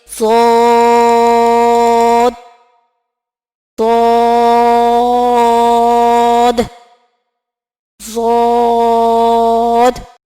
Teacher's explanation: زبان کے کنارے جب اوپر کے دانتوں کی طرف اٹھے تو ضاد ادا ہوتا ہے. تو ضاد کو ہم موٹا کر کے ادا کریں گے، جیسے ضاد ضاد ضاد.